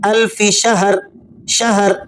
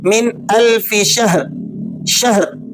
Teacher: तो आपने इसको ज़बर से नहीं पढ़ना, बल्कि हाँ को आपने जज़म के साथ रखते हुए ही पढ़ना है।